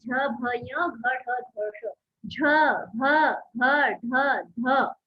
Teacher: ये जितने भी वर्ण हैं ये महाप्राण ध्वनि है। इनको बोलने में प्राण वायु का कंजक्शन ज्यादा होता है।